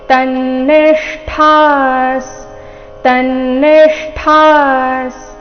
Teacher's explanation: ಮೂರ್ಧನ್ಯ ಷ ಅರ್ಧ ಜೊತೆಗೆ ಠ ಮಹಾಪ್ರಾಣ ದೀರ್ಘ ಇದೆ